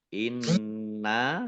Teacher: langsung masuk ke huruf berikutnya yaitu Nun ditandai nunnya ada tasdidnya Nun tasdid dibaca ghunah atau mendengung ditahan dua harakat